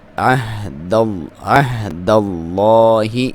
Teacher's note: لام کو پر پڑھیں گے کیونکہ اس سے پہلے زبر ہے۔ عین کو حلق کے آخری حصے سے کلیئر کر کے ادا کریں ، ہا کے ساتھ ملائیں، عہد اللہ، ٹھیک ہے، عین کا